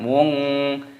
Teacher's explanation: kafnya dibaca tasdid, ditekan, dimasukkan, diidghamkan.